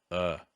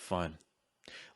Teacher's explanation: the most relaxed sound in english the schwa